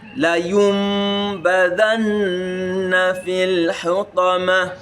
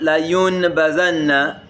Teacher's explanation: It is nun that is there, but it's pronounced as mim. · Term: Iqlab